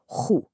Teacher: You have to mix that throat-clearing sound with the rounded oo lips.